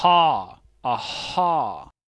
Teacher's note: A parte de trás da língua, ela vai se encurvar, ela vai se retrair e ela vai fazer o fechamento aqui na faringe. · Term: posição faríngea